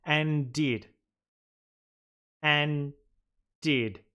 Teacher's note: We mean and did, but we're not saying that D twice. It is too uncomfortable for us.